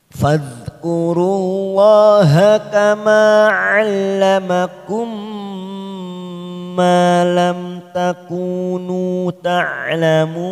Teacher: 'Allamakum ma fathah diikuti alif, 2 harokat kita panjangkan. Malam, mim sukun idhar safawi. Kita baca jelas tanpa mendengung.